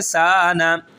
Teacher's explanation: ایک الف کے برابر کھینچ کے پڑھیں گے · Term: الف مدہ